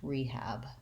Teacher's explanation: we stress the first syllable. We use a clear E vowel, and we say the H sound, rehab. Our A vowel, the black cat vowel, is what the second syllable has for letter A, so long and short, rehab.